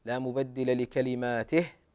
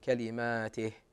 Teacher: نقف على الهاء هكذا ولا نقلقلها كلماته يعني بعض الناس يزيد في الهاء لا الوقوف على الهاء